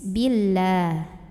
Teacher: Karena huruf sebelumnya yang ba barisnya kasrah, maka bacanya tipis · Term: tarqiq